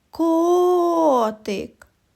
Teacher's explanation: наголос падає на звук О він і називається наголошеним і промовляють його з більшою силою і довготою